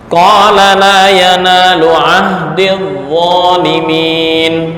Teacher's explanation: Tapi ketika wasal, ya-nya menjadi hilang.